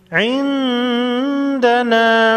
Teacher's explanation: نون ساکن پر اخفاء حقیقی ہوگا